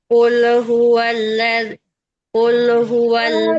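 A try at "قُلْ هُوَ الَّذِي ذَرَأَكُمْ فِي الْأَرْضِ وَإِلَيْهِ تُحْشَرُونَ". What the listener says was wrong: Jangan mantul, Kak. Jangan mantul. Jangan dilepas lamnya.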